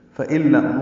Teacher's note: نون ساکن کے بعد لام آیا ہے، ادغام ہوگا